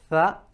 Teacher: But now let's look at the intricate part of the makhraj, where it's being pronounced from. The tongue is protruding out between the upper incisors and the bottom incisors.